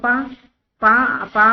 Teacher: आप पा बोलिए तो आपके होठ मिलेंगे, तो इसलिए ओष्ठ